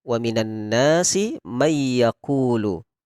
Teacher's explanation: Contoh misalkan bertemu dengan huruf ya, nun, mim, waw. Ketika bertemu dengan huruf ya, maka langsung kita masukkan dengan mendengung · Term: bigunnatin